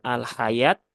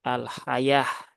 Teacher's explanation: Ya, berarti kalau wakaf pada tak marbutoh dia berubah menjadi hak mati ya, menjadi hak sukun ya. Jadi bukan al-hayat ya, tetapi al-hayah ya.